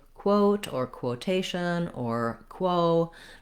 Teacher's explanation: It's just that when we see the letters QU, we don't always think about the fact that they are a k and a w sound together to make the qu. So you have the same problem if you have to say quote or quotation or quo, that you have to move from the w to the o after your k sound.